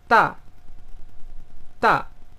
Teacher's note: este es un tono que baja bruscamente. Entonces este empieza alto y baja rápidamente